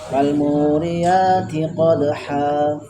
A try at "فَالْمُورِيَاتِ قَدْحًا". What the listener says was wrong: Tunggu dulu, ada ikhtilas di situ ya. Ikhtilas itu menghilangkan harokat, tidak langsung falmu, tapi falmu ada supaya ada sifat baininya ya. Falmu bukan falmu, enggak.